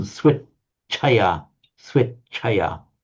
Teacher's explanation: That's a t, and this is the phonetic sound, phonetic symbol for sh. When you're pronouncing it double, what happens is you actually double the t part of it. So swit chaya, you hold it for double, but the doubled bit that you hold is the t sound, swit chaya, swit chaya.